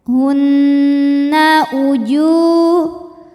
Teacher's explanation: Kemudian ada hukum gunnah musyaddadah karena nun bertasydid. Cara bacanya dengung